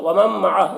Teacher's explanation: نون ساکن کے بعد میم ہے حروف یومن میں سے، تو نون کو میم سے ملا کر غنہ کے ساتھ میں پڑھیں گے، اس کو ادغام ناقص کہتے ہیں۔